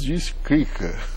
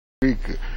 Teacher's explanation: no sul de Minas, as pessoas trocam o R pelo L